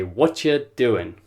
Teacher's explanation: push them together and they'll say what you're doing and again the G has gone off the end of doing